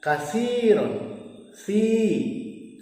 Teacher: Berikutnya adalah kasiron, si matobi, karena ya sukun didahului huruf berharokat kasroh dibaca panjang selama 2 harokat